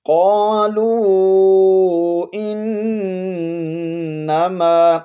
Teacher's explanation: الارض قالوا انما، قالوا یہاں قاف کو موٹا پڑھیں گے، اور یہاں پر جو مد ہے یہ مد منفصل ہے، اس کو آپ 3 الف کی مقدار کھینچ کر پڑھیں گے